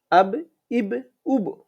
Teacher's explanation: আবার ফিরতে আমার কাছে চলে আসে ঠিক কলকলাটা ওইভাবে পড়তে হয় ধাক্কা দিয়ে পেছন দিকে চলে আসবে বা পাল্টা আওয়াজ করবে এটাকে বলা হয় কলকলা